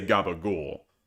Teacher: the unvoiced C started sounding like G, and Italian Americans started cutting off some of the final vowels